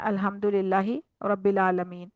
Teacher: यानी हमजा पढ़ दिया आइन की जगह